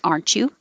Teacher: the t and the y next to each other make a cha